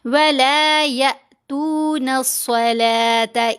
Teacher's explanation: अब हमने या को जब हमज़ा साकिन से मिलाना है तो झटका देना है, छोटी आवाज़ होगी।